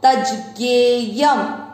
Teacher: य पूरा य पर ऊपर है अनुस्वार, अनुस्वार शब्द के अंत में लास्ट वाले अक्षर पर है इसलिए इसको पढ़ेंगे आधा म